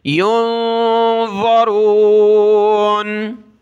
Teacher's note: ظا زبان اوپر لگائیں گے، اوپر کے جو دانت ہیں بیچ میں اندر کی سائڈ زبان کی نوک لگائیں گے